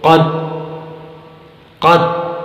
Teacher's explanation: قلقلہ نہ کریں تو حرف تا کی آواز کے قریب جا کر ختم ہو جاتی ہے۔ جیسے قد بغیر قلقلہ کے پڑھیں تو قد، قد۔